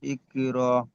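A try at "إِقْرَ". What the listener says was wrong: ইক র নই, র। আরো ঝাটকা দিয়ে বলেন, র।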